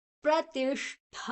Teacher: ಠವನ್ನ ಸ್ವಲ್ಪ ಫೋರ್ಸ್ ಆಗಿ ಒಂದು ಸ್ವಲ್ಪ ಪ್ರೆಷರ್ ಹಾಕಿ ಹೇಳಬೇಕಾದು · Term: ಮಹಾಪ್ರಣಾಲಿ